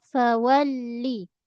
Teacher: Wau muncung. Kemudian menekan sedikit pada lam ada tanda sabdu. Alirkan sedikit suara. Fawalli. Jangan menekan.